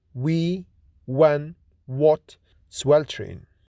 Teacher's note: W is voiced bilabial glide or approximant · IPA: /w/